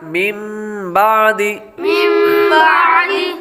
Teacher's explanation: پہلے حروف میں من بعد نون ساکن کے بعد با حروف اقلاب میں سے آ رہا ہے، اس لیے غنہ کریں گے، نون ساکن کو میم سے بدل کر غنہ کر کے پڑھیں گے